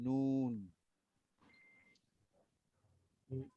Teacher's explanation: 9 নম্বর মাখরাজ হবে জিহ্বার আগাটা তার উপরে বরাবর তালুতে লাগবে, জিহ্বার আগা যেখানে থাকে মুখের মধ্যে তার উপরে তালুতে লাগিয়ে বলতে হবে